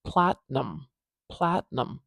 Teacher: the beginning of this word Platinum Platinum we know that because we can hear that it's a little bit louder and a little bit longer at the beginning the a sound especially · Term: primary stress